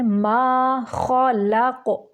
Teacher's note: माँ की आवाज़ को ना की तरफ नहीं लेके जाना, माँ नहीं करना, माँ मुँह से इसकी आवाज़ को निकालना है। माँ खलक, खा को मोटा निकालेंगे और लाम को बारीक पढ़ेंगे, काफ को साकिन करते हुए कलकला करेंगे।